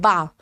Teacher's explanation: जब हम बोलते हैं बा तो हमारे होठों का स्पर्श होता है